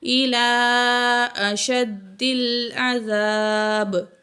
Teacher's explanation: با جو ہے وقف کے وقت یہاں زیر ڈراپ ہوگی تو با ساکن ہو جائے گا، حروف قلقلہ میں سے ہے تو یہاں آواز جاری رہے گی